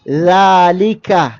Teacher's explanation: നാവിൻ്റെ അറ്റത്തിൻ്റെ തലയും മേലെ മുൻപല്ലുകളുടെ താഴേയറ്റവും ചേർത്തുകൊണ്ട് നമ്മൾ ദാൽ എന്ന ഹർഫ് ഉച്ചരിക്കും. അപ്പോൾ തർക്കീക്കോട് കൂടി അഥവാ സ്വരഭാരമില്ലാതെ സാഇനെ പോലെ തന്നെ ഉച്ചരിക്കേണ്ട ഒരു ഹർഫാണ്.